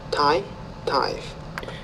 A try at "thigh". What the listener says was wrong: No, not tie. You got to get the tongue between your teeth on lesson 24. So it's thigh. You see my teeth? Thigh, thy.